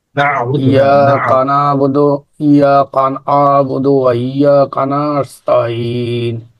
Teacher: যে আইনটা কিন্তু গলার মাঝখান থেকে আসবে